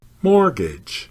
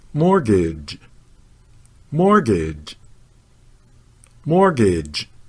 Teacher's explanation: the stress or accent is on the first syllable